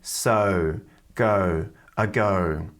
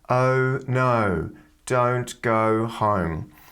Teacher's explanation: It's quite forward in the mouth and the jaw is quite open and it's slightly nasal as well.